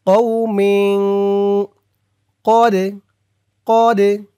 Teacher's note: কফ দিয়ে দাল ধরবে, দাল কলকলার হরফ ধাক্কা দিতে হবে।